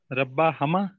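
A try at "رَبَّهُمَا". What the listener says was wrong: नहीं मैंने इसीलिए पूछा था कि रब्बा हमा कौन कहेगा, तो रब्बा हमा कोई नहीं होता, हुमा ही होता है। नहीं नहीं हुमा हुमा ही रहेगा, रब्बु हु रब्बु हुमा रब्बा हुमा रब्बा हुम, लेकिन रब्बी होगा तो रब्बी हिम हो जाएगा बस, ठीक है। क्योंकि जेर वाले के साथ जेर की साउंड आएगी, हमने क्यूसी वन में किया था ना के ला से किया था तो लहू लहुम था, ठीक है।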